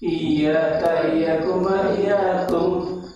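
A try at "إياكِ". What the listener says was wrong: Iyaki ya, Pak, bukan iyaka. Iyaki iyakuma iyakunna.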